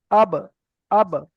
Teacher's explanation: দুটো ঠোঁট মিলে মাত্র আলাদা হয়ে যাচ্ছে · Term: কলকলা